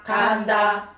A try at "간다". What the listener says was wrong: 이거는 내리면 안 되지. 그대로 가야지 평으로. 흥보가 들어간다.